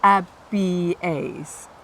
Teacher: because you've got the vowels there, you pronounce them separately.